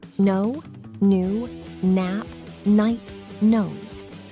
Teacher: word the first sound is the most common pronunciation of n this sound is created by pressing the tongue against the roof of the mouth and letting air flow through the nose